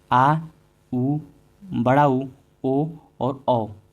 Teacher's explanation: पश्च स्वर क्या होता है? जो जीभ के पिछले हिस्से से उच्चारित होता है।